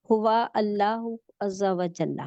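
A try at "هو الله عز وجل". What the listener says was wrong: نہیں ہوا اللہ نہیں ہے، اس کو جوڑیں، ہوا اللہ۔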